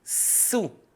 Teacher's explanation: Ini sin keras tipis. Dia supaya tidak mirip dengan huruf shad.